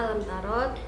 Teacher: Pada ayat pertama, alam tarot, hukumnya itu mim sukun bertemu dengan ta, yang hukumnya itu adalah izhar syafawi yang dibaca dengan jelas